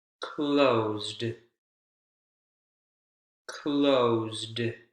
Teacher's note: Closed, also ed ending, actually sounds like a D final consonant sound.